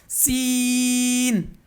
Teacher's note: जुबान की नोक और सामने के जो ऊपर के दांत हैं वो नीचे के दो दांतों के किनारे से टच होगी